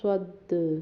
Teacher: یہاں پہ صد دال پہ ہم نے قلقلہ کیا جب ہم نے اسے ساکن کہا ہے